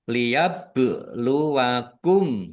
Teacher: ba sukun bacaan qalqalah dibaca memantul ditampakkan pantulannya.